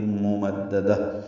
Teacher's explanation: ممددہ دال کو ہا سے ملانا ہے، وقفہ نہیں، تا مربوطہ بھی ہا میں تبدیل ہو جائے گی، دونوں زیریں ختم ہو جائیں گی اور اس پہ ہمس ہوگا